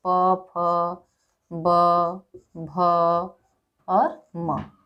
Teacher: ओष्ठ है। यानी इनके उच्चारण में दोनों ओष्ठ आपस में मिलते हैं